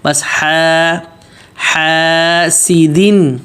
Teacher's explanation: حلق کے بیچ میں سے آواز نکلنی ہے، وسط حلق، وہاں سے نکالنا ہے، لیکن اس کو بہت زیادہ دبانا نہیں ہے.